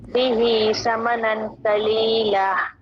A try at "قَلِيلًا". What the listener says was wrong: قلیلہ نہیں آگے ہا نہیں ہے اینڈ میں قلیلہ کے الف ہے قلیلہ